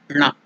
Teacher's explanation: So the tongue should touch the upper portion of the mouth. That is murdhanya. It's murdhanya.